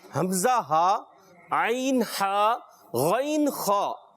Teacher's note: حمزہ ہا حلق کے نیچے والے حصے سے، عین ہا حلق کے درمیان والے حصے سے، اور غین خا حلق کے اوپر والے حصے سے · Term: حروف حلقی